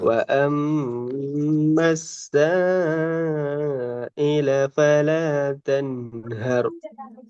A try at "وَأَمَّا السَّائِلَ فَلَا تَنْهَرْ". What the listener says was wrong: இந்த ரெண்டு இர்ரும் தொண்டையில நடுப்பக்கத்துக்கு நாக்கு வரலையே. எர் எர் அந்த முன்னுக்கு தான் வருது, வரையில. இர் வளைஞ்சு வரணும். ஹேர் தென் ஹேர் இந்த இர் ரெண்டு வளைஞ்சு வந்தா தான் அந்த சவுண்ட் வரும்.